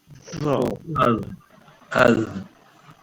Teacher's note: Hujung lidah kena pada hujung gigi depan bahagian atas. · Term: huruf za